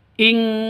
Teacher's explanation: Nun mati bertemu dengan kaf. Samar didengungkan, siap-siap ke huruf kafnya. Nun matinya ditambah dengan ng. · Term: ikhfa hakiki